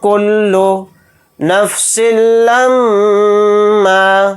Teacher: نون ساکن کے بعد کاف آ رہا ہے تو نون کی آواز کو ناک میں چھپا کر اخفا کے ساتھ پڑھیں گے · اخفا اس میں اس طرح سے کریں گے، کل نفس لما، میم کے اوپر تشدید ہے تو یہاں پر ہم غنہ کر کے پڑھیں گے